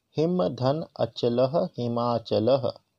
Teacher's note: देखिए अ प्लस अ बराबर आ, अर्थात अ से अ का संयोग होने पर आ बन जाएगा, मतलब ये ह्रस्व और ह्रस्व मिलके दीर्घ हो गए हैं, इसलिए संधि का नाम है दीर्घ स्वर संधि।